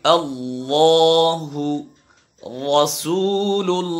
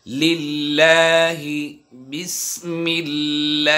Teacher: ইল উল হাল্লা হাল্লি হাল্লু আহা [মিউজিক] লাম কারণবশত মোটা হয় আল্লাহ শব্দের লামের পূর্বে জবর পেশ হলে তখন মোটা হবে আর জের হলে তখন বারিক হবে